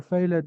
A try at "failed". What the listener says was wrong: Failed. So please, the E is silent.